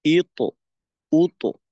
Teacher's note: কফ এবং ত এই দুইটা হরফের কলকলা কিন্তু বা জিম দাল এই তিনটা হরফের তুলনায় একটু বেশি হয় কারণ যেহেতু এখানে মোটার বিষয়টা থাকে ইক উত ইক উত মোটা